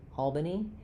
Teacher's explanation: Albany with all stressed